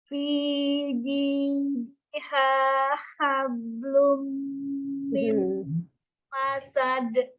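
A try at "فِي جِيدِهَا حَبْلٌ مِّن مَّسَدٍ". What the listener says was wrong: Tidak hablum, enggak ada kolkolanya. Fi jidiha hablum min masad. Yang pertama H besar, yang kedua baru H kecil. H dulu H besar dulu. Hanya belum dapat H yang pertama.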